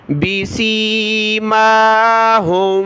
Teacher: میم کو اوپر کھینچا کھڑا زبر کی وجہ سے